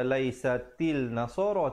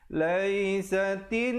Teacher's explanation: Alif lam syamsiah, di situ lamnya tidak dibunyikan. Jangan pula kita baca laisatil nasara tetapi laisatin.